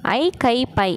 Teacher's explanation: இந்த ஐ அப்படிங்கிறது தனிச்சு வந்துச்சுன்னா 2 மாத்திரை அளவுக்கு ஒலிக்கும். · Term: ஐகார குறுக்கம்